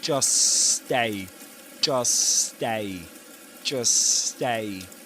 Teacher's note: by not pronouncing the t sound in the middle of these words, in between these two words, is to produce only one sound, one s sound, a long s sound.